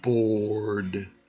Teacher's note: The main thing that you will get out of this is learn how to use that R sound strongly. In American English, the R you can hear very clearly, and the British English can be a little bit weaker with the use of R. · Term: hard R's